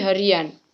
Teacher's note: proses pengimbuhan sufiks an pada dasar hari akan muncul bunyi vokal y. Contohnya, hari ditambah an menjadi harian.